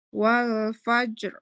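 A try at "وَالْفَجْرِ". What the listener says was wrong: Wal fajr. Tapi ini ibu-ibu semuanya belum dapat tebelnya ya. Tapi udah lumayan lah ya. Lumayan. Huruf roknya terbaca. Yang ini butuh latihan memang.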